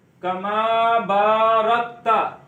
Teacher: با کو ایک الف اتنا لمبا کریں گے